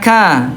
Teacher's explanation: Aqsa lisan wa ma yuhadhihi minal hanakil ala lahmi wal admi tahta mahrajal qafi qalila. Pangkal lidah bertemu dengan langit-langit yang lunak dan keras sekaligus sedikit di bawah huruf qaf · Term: huruf kaf